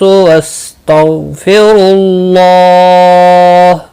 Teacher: واستغفر اللہ غین مستعلیہ ہے، پر پڑھا جائے گا، اس کو ہلانا نہیں۔ را پیش کی وجہ سے پر پڑھا جائے گا۔